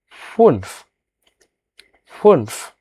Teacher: উমলাউটের কারণে ঠোঁট গোল হবে